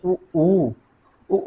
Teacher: उ का उच्चारण मित्रों हम केवल ओष्ठ से ही करते हैं